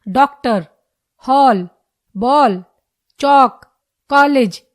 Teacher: आगत स्वर औ की ध्वनि का प्रयोग अंग्रेजी के शब्दों के साथ किया जाता है यह आ और औ के बीच की ध्वनि है · यह आ और औ के बीच की ध्वनि है, जैसे डॉक्टर, हॉल, बॉल, चौक, कॉलेज इत्यादि।